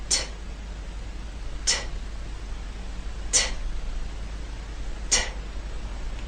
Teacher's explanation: first you need to stop the air flow you stop it with the tip of your tongue and that hard bump behind your Upper Front Teeth second when you release the air there should be a puff · when you release the air there should be a puff of air · If you want to check to see if you're doing this correctly, take a piece of paper. As you say the T sound, the puff of air should be strong enough to move the paper in front of your lips. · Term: true t, true T